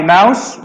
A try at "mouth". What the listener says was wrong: A mouse is an animal. A mouth with the th is this.